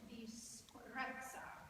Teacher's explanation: Go for a longer S. Make a long S and say disprezza for us, and use the S to kind of start everything else.